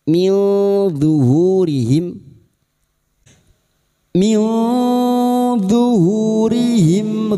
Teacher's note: Nun sukun atau tanwin yang bertemu dengan salah satu dari 15 huruf ini termasuk huruf d. Maka nun sukun dibaca samar dan mendengung selama tiga harakat.